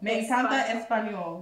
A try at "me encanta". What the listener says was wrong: Yes.